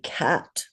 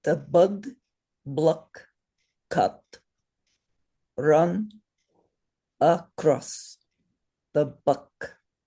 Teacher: you have to remember not to say ah but always say uh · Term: Sanskrit accent